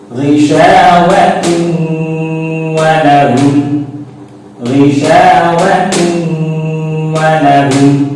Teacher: Jadi ditahan. Jadi membaca dengung itu ditahan bacaannya, kira-kira membaca 2 harokat ya.